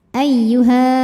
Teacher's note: cara membacanya huruf Ha ini kita panjangkan dua harakat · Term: mad tabi'i zahiri